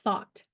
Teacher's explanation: The tip of the tongue is being placed between the upper and lower teeth, creating a narrow passage for the air to flow through. As the air passes through this passage, it creates friction, producing the voiceless fricative sound. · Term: voiceless th, voiceless TH